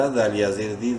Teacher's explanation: دال کو پراپر اپنے مخرج سے پڑھتے ہوئے ایک الف برابر لمبا کریں گے